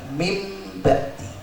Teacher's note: Mim ini nunnya, nun sukunnya murni berubah menjadi mim. Berarti sama sekali tidak ada suara nun. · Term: iklab